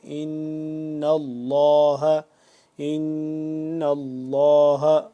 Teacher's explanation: نون مشدد پہ ہم نے غنہ کرنا ہے اور لفظ اللہ کو پر کر کے پڑھیں گے